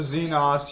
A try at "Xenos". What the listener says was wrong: Not Xenos, it's Xenos. There's no A in it.